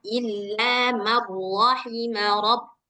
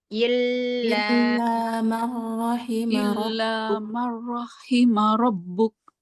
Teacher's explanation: nunnya ini enggak perlu dibaca langsung dimasukkan ke ro. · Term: idgham bila ghunah